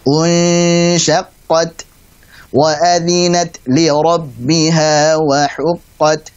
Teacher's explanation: Ada huruf-huruf ta sukun yang harusnya kita baca dengan hamas. Hamasnya sendiri itu kadar syiddahnya pada huruf ta ini harus lebih dominan. · Kita setelah mengenyangkan hamzah, kemudian kita kembali lagi posisi normal sehingga saat mengucapkan hukum ikhfa hakiki pada nun sukun ketemu dengan shin dalam kondisi yang tipis. Karena shin tipis maka kita baca gunnahnya dengan tipis pula.